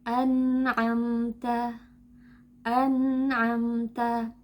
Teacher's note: Titik artikulasi huruf nun adalah ujung lidah dan gusi gigi depan atas. · makhraj huruf nun tertutup dari segi lidah. Akan tetapi ada suara yang keluar dari khayshum karena huruf nun memiliki 2 makhraj, yaitu makhraj lisani dan juga makhraj khayshumi.